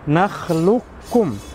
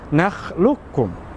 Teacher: Tapi nakhluqkum langsung dimasukkan ke huruf kaf seakan-akan huruf qafnya tidak ada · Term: idgham mutaqariban